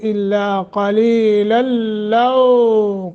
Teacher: لو حروف لین ہے، ایک الف کے برابر لمبا کریں گے